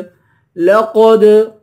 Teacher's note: قاف کو دال کے ساتھ ملا کر دال پر قلقلہ کریں گے